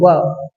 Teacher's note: ಅಕ್ಷರಗಳು ಇಲ್ಲಿ ಉತ್ಪತ್ತಿಯಾಗುತ್ತವೆ ಅದೇ ರೀತಿ ದಂತೋಷ್ಟ್ಯ ದಂತೋಷ್ಟ್ಯ ಅಂದ್ರೆ ಹಲ್ಲು ಮತ್ತು ತುಟಿಯಿಂದ ಹಲ್ಲಿನ ಮತ್ತು ತುಟಿಯ ಸಹಾಯದಿಂದ ಉತ್ಪತ್ತಿಯಾಗುವಂತ ಅಕ್ಷರಗಳು